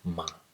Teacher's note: In Nepal Bhasha, Ma with a nasal sound at the end.